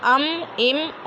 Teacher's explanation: मीम दोनों होठों के खुश्क हिस्से से अदा होता है, जैसे अम, इम, उम, है ना।